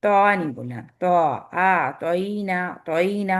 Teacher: tip of the ٹنگ آپ کے اوپر کے دانتوں کے گم پہ لگ رہی ہے، لیکن ساتھ ساتھ تو میں استعلا بھی ہے اور اطباق بھی ہے ، جس کی وجہ سے یہ ہیویسٹ ترین لیٹر ہے، تو